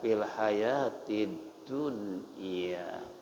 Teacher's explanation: Tapi ketika hayatid asyamsiyah lain hukum karena alif lam ketemu dengan dal, di atas dal ada tasdid, alnya enggak dibaca